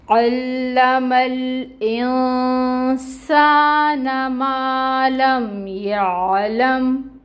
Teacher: عین وسط حلق سے نکلے گا، اس کے اوپر فتحہ کی حرکت ہے، 1 کاؤنٹ پڑھیں گے۔ عین کو لام کے ساتھ ٹائٹلی جوائن کریں گے کیونکہ تشدید ہے اور ٹائم ٹیکنگ ہوگا، اور یہ جو فتحہ کی حرکت ہے یہ 1 کاؤنٹ ہی پڑھی جائے گی، اس کو لمبا نہیں کریں گے۔